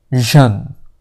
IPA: ʒən